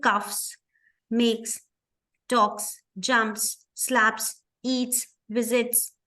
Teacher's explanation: the last consonant sound does not have that vibration so these are unvoiced